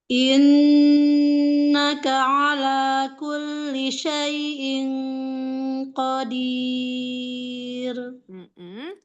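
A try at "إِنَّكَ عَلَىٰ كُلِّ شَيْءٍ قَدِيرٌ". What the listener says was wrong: Pada saat di ko-nya mau ikhfa tebal lagi. Syai'in qadir. Ro di akhir, ro-nya tafkhim wala tarkik? Iya, qadir. Jadi di bawah ya, bukan qadir, tapi qadir.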